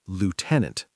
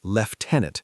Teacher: British, lieutenant. The U becomes an F sound in British English.